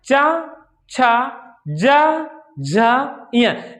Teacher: अब देखो च छ ज झ इय है ना, तो च वर्ग जब हम च बोल रहे ना, च छ ज झ इय, जब उच्चारण हम कर रहे हैं तो हमारी जिह्वा क्या हो रही है, तालु को स्पर्श कर रही है। क्या है, तालु को स्पर्श कर रही है, अर्थात च वर्ग का उच्चारण स्थान क्या हो गया, तालु हो गया।